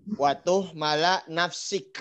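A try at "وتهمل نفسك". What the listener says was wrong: Wa tuhmila. Gimana tuh mala? Nafsaka. Tuhmila ya.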